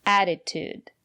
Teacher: The first letter T is pronounced as a fast D because the syllable after the letter T is not stressed. Attitude. And the second letter T is pronounced as T.